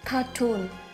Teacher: cartoon, trọng âm rơi vào âm thứ hai